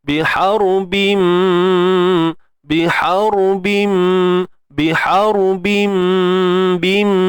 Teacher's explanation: Idgham bi gunnah, masuk dengan sempurna. Bi gunnah, dengan dengung.